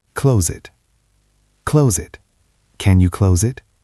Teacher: The word close as a verb has a Z sound